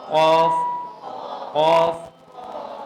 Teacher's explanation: زبان کی جڑ جب اوپر کے تالو سے ٹکرائے گی تو قاف ادا ہوگا. اب پہلا کام یہ ہے کہ آپ نے اپنی زبان کی جڑ کو اوپر لے کے جانا.